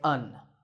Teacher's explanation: in speech we don't say an we say un